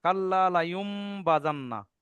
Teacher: অনেকে ভাবছে যে জি এই জাবারটা মিমের উপরে না বার উপরে, কিন্তু না, যে কায়দা আপনাদের, যে নুন সাকিনের পরে যখন বা আছে, তখন নুন সাকিন বাদ দিয়ে মিম ধরতে হচ্ছে। তাহলে এখানে ভালো করে দেখেন, নুন সাকিনের পরে বা আছে, তার মানে এই নুন সাকিনের জায়গায় মিমটা হবে।